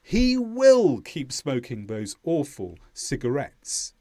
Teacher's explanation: to show that annoyance, we put an extra stress on the word will.